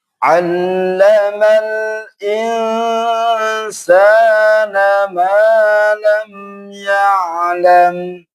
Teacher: cara mengucapkan ain yaitu di tenggorokan dan harus mengalir suaranya. Ya, tidak boleh ya, tidak boleh syiddah, ya, tidak boleh ditekan.